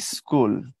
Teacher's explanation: অতিরিক্ত একটা ই শুরুতে যুক্ত হচ্ছে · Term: আদি স্বরাগম